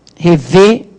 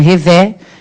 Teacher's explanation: Rever, som fechado, não é revé.